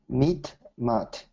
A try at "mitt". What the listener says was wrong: Okay, so what I'm hearing, instead of mitt, I'm hearing more meat. Okay, so Mitt. Mitt,